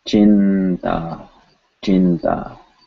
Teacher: Because chin, it represents an N sound with the teeth